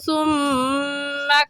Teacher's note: ثم میں میم مشدد ہے اور میم مشدد پر ہمیشہ غنہ ہوتا ہے